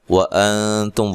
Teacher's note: واو کو ادا کرتے ہونٹوں کو گول کرنا ہے